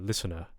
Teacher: if you're going for a British, I guess, standard, say, South British accent, listener, you can get away with, not pronouncing the rhotic sound at all, at least in this context.